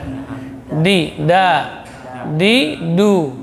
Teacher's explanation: ujung lidah di usul, pangkal gigi seri atas